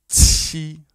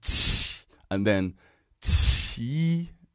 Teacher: You got that t t sound. It must be quite a powerful explosion.